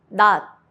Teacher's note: Don't release the sound, just stop it with your tongue. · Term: soft T